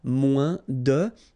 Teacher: it's moins in French, so no discussion about the S here. Don't pronounce it, okay? Moins de, and then you put your noun, que, than, and the rest of the structure.